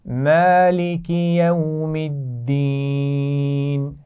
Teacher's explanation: مالکی میم پر کھڑا زبر ہے تو تھوڑا سا کھینچ کر پڑھیں گے